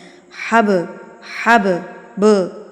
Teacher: قلقلہ کرنا ہے، اس کو تھرتھراہٹ سے ہلا کے پڑھنا ہے. حب لفظ کو مار کے پڑھنا ہے. حب، حب، ب، ٹھیک ہے، فوری سے مخرج کو چھوڑ دینا ہے · تو یہاں پر ہمارے پاس با آ گیا، یہاں پر دیکھیں با ہے، با کے اوپر جزم ہے، تو اٹ مینز آپ نے یہاں پر کیا کرنا ہے؟ قلقلہ کرنا ہے، اس کو تھرتھراہٹ سے ہلا کے پڑھنا ہے. حب لفظ کو مار کے پڑھنا ہے.